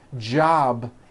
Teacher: job ends in a b which is a voiced sound job it's not job with an unvoiced P keep the voicing